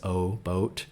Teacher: My Californian English and a very standard American English pronunciation is O. You've got a little off-glide